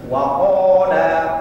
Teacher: Itu ada huruf yang memang logatnya seperti itu, namanya istiqla. Gak bisa kita baca wakada, mesti agak o tu.